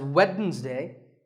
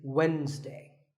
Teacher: the D is silent